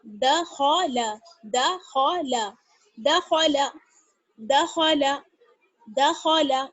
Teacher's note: دیکھیے خا بیچ میں آ گیا ہے حروف مستعلیہ میں سے خا, تو خا کو موٹا پڑھیں گے, دال اور لام کو باریک پڑھیں گے